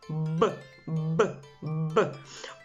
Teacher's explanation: ви з яким звуком будемо працювати так це приголосний звук б він приголосний Бо у нас в ротику відбувається перешкода із губ